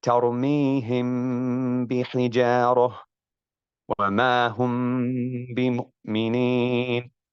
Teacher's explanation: The meme sakina is concealed with the ghunna when it is followed by a single letter, which is the ba